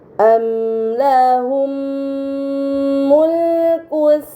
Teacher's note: Pada kata amlahum mulku terdapat mim sukun bertemu dengan huruf mim, ini dinamakan idgham mimi. Maka mim sukun dibaca secara melebur dengan gunnah yang dipanjangkan